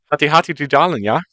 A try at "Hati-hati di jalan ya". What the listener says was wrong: See? It's super simple.